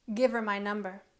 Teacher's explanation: instead of saying give her we say Giver give her my number so it sounds like V apostrophe e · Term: linking